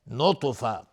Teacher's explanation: تا از حروف استعلاء غلیظ تلفظ میشه و اینجا قلقله هم میخواد